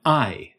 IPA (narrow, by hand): aɪ̯